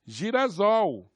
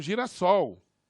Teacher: um S entre duas vogais, ou entre dois sons, dois fonemas que são sonoros, que são vozeados, entre duas vogais, ele tem sempre som de Z